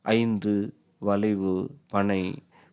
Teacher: இங்கனும் ஐகாரம் குறுகி ஒலிப்பதற்கு ஐகார குறுக்கம் என்று பெயர். உதாரணம் ஐந்து, வளைவு, பனை போன்ற சொல்லில் வரும்பொழுது ஐகாரம் குறுகி உள்ளது